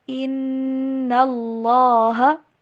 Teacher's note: اللہ کا نام موٹا کر کے پڑھیں گے، بولڈ لیٹر کی طرح لام پڑھا جائے گا۔